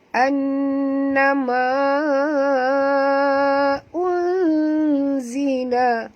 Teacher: nun mati bertemu zai, masukkan bunyi nun ke dalam zai disertai dengung dua harakat ikhfa haqiqi